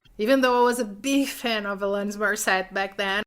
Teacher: I lost the pronoun I and the consonants on the end of big and Morissette